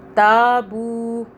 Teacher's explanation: تا کو کھینچا کیونکہ الف آ رہا ہے، بو کو کھینچا کیونکہ واو آ رہا ہے۔